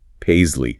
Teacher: Long a z sound for the s. Long e.